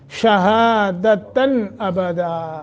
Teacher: اظہار کر کے پڑھیں گے، نون تنوین کے بعد حروف حلق میں سے حمزہ ہے